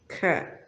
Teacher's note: al de la I española en papi, tenemos una K donde su sonido es más explosivo que el de una C española en cama o acto . K. Y tenemos una S como la S española, aromatics,